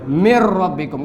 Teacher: nun sukun kita leburkan ke ro, nun hilang, ro menjadi bertasydid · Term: idgham